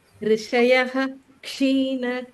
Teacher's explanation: अत्र विसर्गानन्तर क्ष आगच्छति चेत् सम्पूर्ण विसर्गं वक्तव्यम्